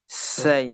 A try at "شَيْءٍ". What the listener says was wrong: nggak bisa tebal lagi. Syai. Ah, ya.